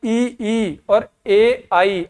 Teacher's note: तो अग्र स्वर ई और ए आई, आपकी जीभ आगे ही है।